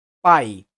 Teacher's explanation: nesse caso a sílaba começa com a vogal mais forte e depois da semivogal por exemplo na palavra pai a sílaba começa forte e termina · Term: ditongo decrescente